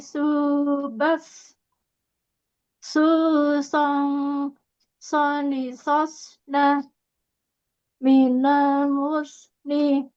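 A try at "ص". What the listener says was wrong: masih lebih ini masih tipis ya bacanya. Kalau tipis itu sin ya,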